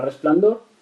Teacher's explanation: la palabra resplandor también es una palabra aguda. Lleva la sílaba tónica en dor y en este caso no se acentúa porque acaba en una consonante que no es n ni s.